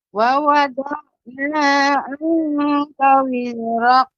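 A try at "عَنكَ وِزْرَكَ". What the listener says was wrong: Wizrak. Bukan wizrak karena kaf ini langit-langit bagian atas, tidak bagian lunak. Ya, walaupun sedikit ya, tapi kalau qaf itu bagian lunak. Wizraqu, wizraqu, ya itu bagian dalam. Namun ini dia bagian atas, langit-langit yang keras. Wizrak, wizrak.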